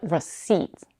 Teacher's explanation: notice that the P in receipt is silent